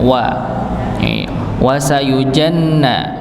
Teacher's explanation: Huruf waw di sini ya dibaca seperti dhammah ya, maka dimonyongkan